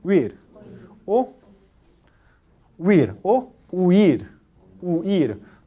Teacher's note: dos vocales tiene más o menos misma duración